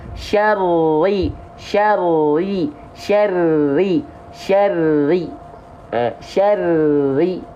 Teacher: yang menyentuh bukan ujung sisi lidah, tapi punggung lidah. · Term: huruf ro